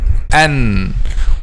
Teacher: How? By making the tip of the tongue, which is the first part of the head of the tongue, touches the gums of upper 2 front incisors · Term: letter Noon